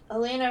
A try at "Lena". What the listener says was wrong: Just Lena. Not Elena. Just Lena.